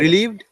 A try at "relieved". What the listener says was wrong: Good, relieved,